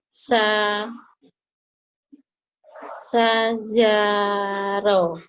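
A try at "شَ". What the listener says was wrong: Nah, yang pertama gedein. Sya gitu.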